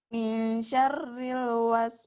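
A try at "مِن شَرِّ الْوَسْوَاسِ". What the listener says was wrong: Lamakan sebentar, lamakan mil. Nah, itu namanya ikhfa ya. Ikhfa itu dia samar. Jadi mil syarril waswasil khannas.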